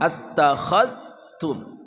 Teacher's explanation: kha attakha ya dari ujung kerongkongan